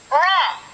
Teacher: suara keluar dari pertemuan antara ujung lidah dan langit-langit bagian depan, yang disertai dengan satu kali getaran halus ujung lidah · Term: huruf ro